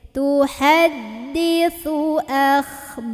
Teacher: ini sa ujung lidah ketemu ujung gigi. Jadi ujung giginya, ujung lidahnya gigit sedikit ya.